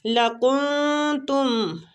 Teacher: کن نون جو ہے نا اخفا کریں گے نون ساکنہ پہ